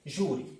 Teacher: Ó, penúltima sílaba de júri é a mais forte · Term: penúltima sílaba mais forte